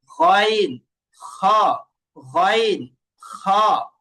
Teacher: একদম কণ্ঠনালীর একদম শেষ জায়গা থেকে দুইটা হরফ উচ্চারণ হয়। গইন, গইন, এই যে এইভাবে গইন খ, গইন খ।